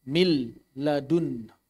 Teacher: Maka di sini suara nunnya hilang sama sekali, 100%. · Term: idgham kamil